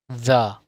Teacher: TH để lưỡi giữa hai hàm răng, đọc âm the.